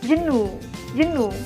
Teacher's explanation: kebanyakan rata-rata mereka bakalan masukin vowel di antara j sama n. Dia bakalan nyebutinnya jenuh, jenuh. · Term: swa